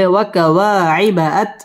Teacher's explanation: وكواعب أترابا وكواعب أترابا ওয়াও ঠোঁট গোল করে উচ্চারণ করতে হবে ওয়াকাওয়া মধ্যে তাবাঈ এক আলিফ টেনে পড়তে হবে ওয়াকাওয়াইবাত র র পুর হবে এবং র মধ্যে তাবাঈ এক আলিফ